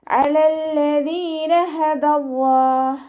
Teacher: ദാലിൻ്റെ മഖ്റജ് വരുന്നത് നമ്മുടെ നാവിൻ്റെ അറ്റവും മേലെ മുൻപല്ലിൻ്റെ അറ്റവും ചേർന്നിട്ടാണ്.